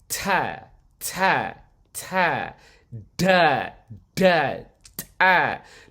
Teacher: I'm producing all these sounds simply by having the tongue rest upon the teeth. This is why we call them dental sounds.